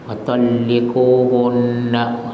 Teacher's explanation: nun yang bersabdu wajibul guna, ya, dengungkanlah 2 harakat